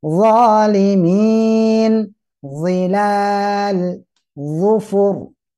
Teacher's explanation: Posisinya tebal, mau posisi apa saja, vokal a, i, u atau mati dia tetap tebal. Ya, atau seperti o gitu ya, tebal, memenuhi mulut kita.